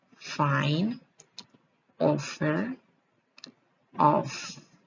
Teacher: The sound F is voiceless labiodental fricative.